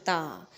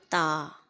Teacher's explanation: اپنی زبان کی نوک کو اوپر کے دانتوں کے پچھلے حصے پر ٹچ کرو اور کہو تا۔